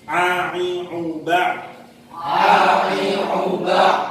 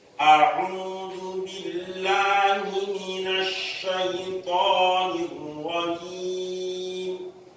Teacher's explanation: A'u ini dari tenggorokan yang bawah, kemudian ain berarti dari bawah naik ke tengah.